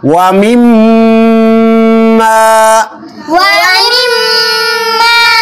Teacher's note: মিম্মা ওয়াজিব গুন্না, এখানে মিমের উপর একটু দেরি করতে হবে, গুন্না করতে হবে।